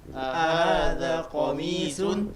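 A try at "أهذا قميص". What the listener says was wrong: Mumtaz. Mimnya dipanjangkan. Qamisun. Ahada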